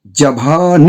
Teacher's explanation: ज लघु हो गया भा गुरु हो गया न लघु हो गया तो ये हो गया लघु गुरु लघु